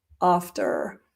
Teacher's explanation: In many English accents, you would hear that R at the end and it would be more like after.